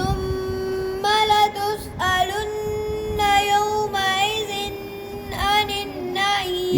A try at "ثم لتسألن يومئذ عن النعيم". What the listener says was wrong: यौमइज़िन पे गुना नहीं, आनिन पे है जी.